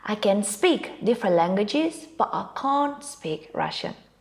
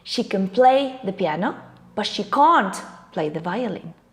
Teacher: when the sentence is positive it is the main verb the word that gets the stress but when the sentence is negative it is the modal verb can't the one getting the stress